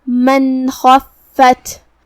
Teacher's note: من خفت کلمت خفت میں یہاں حرف الخا ہے، خا کو ہم بھاری آواز میں ادا کریں گے اور اسے حلق کے اوپر والے حصے سے ادا کریں گے۔ فا پہ تشدید ہے، لہذا ہمیں 2 حرف کے برابر فا کو ادا کرنا ہے · فَهُوَ فِي عِيشَةٍ رَاضِيَةٍ وَأَمَّا مَنْ خَفَّتْ مَوَازِينُهُ کلمت وَأَمَّا میں میم کا تشدید کا دھیان رہے، من خفت یہاں نون پہ جزم ہے، پھر حرف الخا ہے، یہاں حکم ہے اظہار، کیونکہ خا حروف الاظہار میں سے ہے، تو ہم یہ حکم کو بغیر غنہ کے ادا کریں گے اور نون ساکن کو ظاہر کریں گے